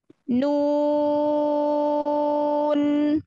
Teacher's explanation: Kasih sedikit aja di akhir ya untuk menyempurnakan sifat nun yaitu bainiyah, sedikit mengalir. Suaranya sedikit mengalir ya.